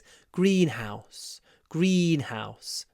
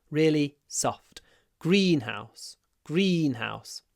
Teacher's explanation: the first syllable is not too strong and the second syllable is really soft